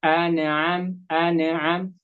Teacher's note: Seharusnya jadi jangan buru-buru dipindah lidahnya kalau di makronya di mana, umpamanya nun di ujung lidah bertemu dengan langit-langit